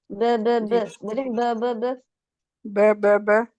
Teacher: बा केलिए होठों को अपने जमों को इतना अलग नहीं करना होठों से होठ अलग हो जाएंगे तो बा अदा हो जाएगी